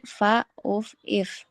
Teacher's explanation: Yang ketiga, huruf fa. Bibir dan gigi seri atas agak berdesis